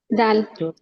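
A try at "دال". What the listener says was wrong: দাল। দাল বলা যাবে না, দালে কত আলিফ টান আছে বলেন তো? তিন আলিফ। তাহলে তিন আলিফ টেনে পড়তে হবে কিভাবে? দাল।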